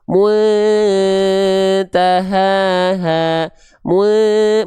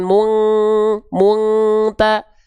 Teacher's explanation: menjauhi eng artinya tidak dominan di hidung · Contoh berarti di sini ya pada kalimat ini kita enggak baca muntaha enggak dibaca muntaha munta tapi dibacanya cukup mu disamar ee disamarkan dengungnya enggak terlalu kuat